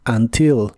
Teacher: La U de la palabra until se pronuncia como una A, until. Y esta palabra puede tener el acento en la primera sílaba o en la última, y ambas formas son correctas.